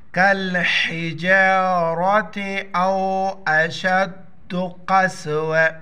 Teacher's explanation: دیکھو یہ گولتا ہے وقف، یہاں پر لام وقف ہے، وقف کی حالت میں یہ ہا میں تبدیل پڑ جائے. قسوہ آخر میں ہا کا ساؤنڈ نکالیں گے، گول ہا کا